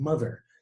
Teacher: we're preventing the air exiting our bodies by way of the mouth and forcing it to exit by way of the nasal cavity out our nose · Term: nasal consonant